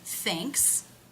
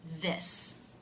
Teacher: it can be the unvoiced TH sound, as in thanks, or it can be the voiced TH sound, as in this